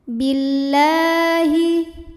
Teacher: Lam pada lafaz Allah atau lam jalalah dibunyikan secara tartik sebab huruf sebelumnya berbaris kasrah. Maka dibacanya tipis bunyinya la.